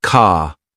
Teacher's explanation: It's a soft, almost invisible R sound.